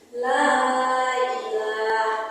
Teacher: Karena ada mad bertemu dengan huruf alif dibaca panjang enam harakat. Lailaha dibaca panjang harakat. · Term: mad jaiz